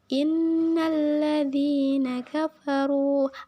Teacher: suara dengung suara ringan yang berasal dari rongga hidung dan tidak ada penggunaan lidah sama sekali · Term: ghunnah